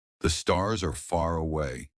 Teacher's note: Unlike British English, Americans stretch their R sounds. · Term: The secret R sound